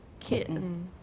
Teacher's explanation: the majority of speakers of english pronounce this word with a glottal stop